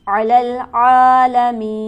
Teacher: علی العالمین، عین پر ہمارے پاس کھڑی حرکت موجود ہے، اسے ہم کھینچیں گے 1 الف کے برابر، اور مین پر ہمارے پاس مد عارض ہے جسے ہم کھینچتے ہیں 4 الف کے برابر